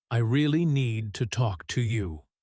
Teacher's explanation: words like to and you might almost blend together quickly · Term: uneven stress pattern